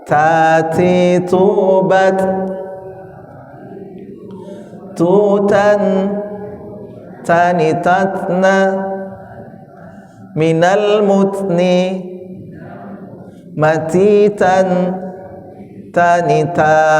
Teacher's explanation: ujung lidah disentuhkan ke antara gusi ya dengan gigi. Gusi dan gigi. Ta itu menghasilkan huruf ta, dal dan to ya.